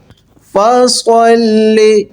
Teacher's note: فصلی صاد ہے پر پڑھا جائے گا، اس میں ساؤنڈ آئے گی سیٹی کی، پر سین جیسا پتلا نہیں پڑھا جائے گا